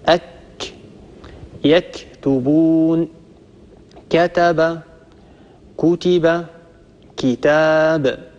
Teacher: الكاف يخرج من أقصى اللسان مع ما يحاذيه من الحنك الأعلى. طبعا الذي يحاذيه من الحنك الأعلى هنا الحنك اللحمي والحنك العظمي معا.